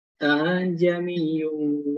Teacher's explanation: Tashil itu dia pada huruf hamzah dan alifnya itu disamarkan gitu Pak. Jadi tidak a jamin tidak, tapi a jamiyun langsung begitu.